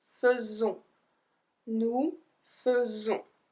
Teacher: the S is not pronounced S, it's pronounced Z.